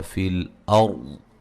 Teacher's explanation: مد اصلی ہے دونوں جگہ، وما الف مدہ ہے، فی الارض را کو موٹا ادا کریں گے، را ساکن سے پہلے زبر ہے